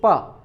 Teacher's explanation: स्पर्श करते हैं। जैसे प आपने बोला तो दोनों होठों में स्पर्श हुआ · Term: स्पर्श व्यंजन